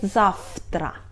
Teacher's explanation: We write завтра but we pronunciate [зафтра]. В is voiced consonant but it's before unvoiced — Т, so we pronunciate it like unvoiced too — Ф